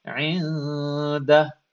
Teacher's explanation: Notice I'm holding the noon in my nose. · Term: ikhfa